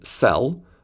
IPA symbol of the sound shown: s